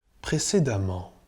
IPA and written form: pʀe.se.da.ˈmɑ̃ (Précédemment)